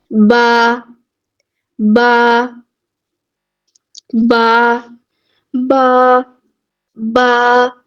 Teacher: تو جب آپ با ادا کر رہے ہوں گے تو آپ نوٹس کیجئے گا اس بات کو کہ ہمارے ہونٹ آپس میں بند ہو رہے ہیں۔ ٹھیک ہے، بند ہو رہے ہیں، لیکن با جو ہے وہ گیلے حصے سے ادا ہو رہا ہے، جو تھوڑا سا اندر والی سائڈ پہ ہے، جہاں سے دانتوں کو لگ رہے ہیں ہونٹ، وہاں سے ادا ہوگا۔